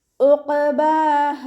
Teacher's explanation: ഐന് തൊണ്ടയുടെ മധ്യഭാഗത്തു നിന്നാണ് വരുന്നത്, ഹംസയായി പോവാതെ ശ്രദ്ധിക്കുക